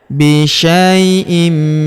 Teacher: Huruf sya kita ayun sekali karena terdapat ya sukun di depannya.